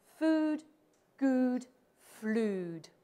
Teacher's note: Shakespeare rhymed all of these three words. He said them all with the long vowel that I have in food.